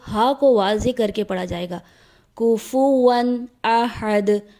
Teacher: درست ادائیگی ہے کفواً احد۔ دال حرف قلقلہ میں سے ہے، اس لیے دال کی آواز حالت وقف میں پلٹ کر واپس آئے گی۔